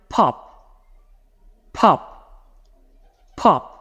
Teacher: It needs to have this little burst of air before the O. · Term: plosives